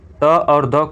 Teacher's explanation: त और द को उच्चारण स्थान के आधार पर दंतवर्ण कहते हैं